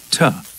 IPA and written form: tə (to)